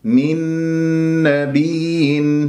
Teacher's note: نون مع النون إدغام أيضا بغنة